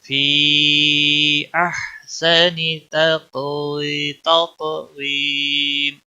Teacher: قاف پوٹا بھی پڑا جائے گا، اس پر قلقلہ بھی ہوگا. اور یا مدہ ہے، ایک الف کے برابر کھینچنا ہوگا.